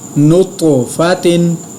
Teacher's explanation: یہاں پہ میں نے طا کو پر ادا کیا، طا پر قلقلہ بھی کیا، لیکن یہاں آخری چھوٹی گول تا کے ساتھ تنوین ہے، میں نے غنہ نہیں کیا کیونکہ آگے حروف حلقی ہے